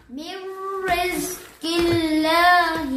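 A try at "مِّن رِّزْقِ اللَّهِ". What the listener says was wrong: کوئی رزق زا پر سیٹی بچو. میر رزق اللہ. لفظ اللہ کا لام تو نہیں موٹا پڑھنا، وہ زیر ہے اس سے پہلے.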